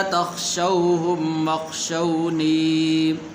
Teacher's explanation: یہاں پر واو حروف لین میں سے ہے تو اسے لمبا نہیں کریں گے